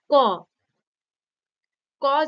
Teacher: শ্বাসবায়ু সম্পূর্ণ বাধাপ্রাপ্ত হয়ে বেরিয়ে এলে উচ্চারিত হয় স্পৃষ্ট ব্যঞ্জন ধ্বনি